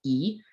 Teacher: you pronounce down like e right it's very closed and also your tongue is super far to the front of your mouth it's also unrounded your lips aren't rounded · this works so the first vowel on this chart is e it's a closed front vowel